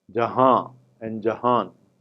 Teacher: there is a case of nasal consonant deletion and nasalization